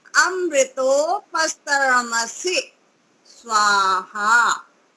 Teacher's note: बाद में जो से आता है उसको लंबा नहीं करना है, सी नहीं बोलना है, से।